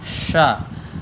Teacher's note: तालव्य सकार में जिह्वा का मध्य भाग ऊपर की ओर लगता है, जैसे हम च उच्चारण करते हैं श, इससे सीटी भी बजती है। हिंदी में इसे सीटी वाला सा भी लोग बोलते हैं।